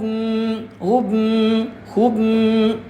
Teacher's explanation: Di itu adalah deng dengung. Jadi suara kita dimasukkan ke dalam rongga hidung